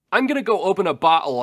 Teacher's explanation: He has a glottal stop like he's speaking with a Cockney accent almost. · He has no lilt to his voice other than a glottal stop.